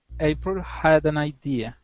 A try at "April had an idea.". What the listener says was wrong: Perfect. Okay, that's how you combine those together. Okay, nice job.